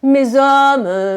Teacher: Mais non, mais t'as une liaison qui est faite par le z. Et le z, c'est une consonne voisée qui traverse tout le corps.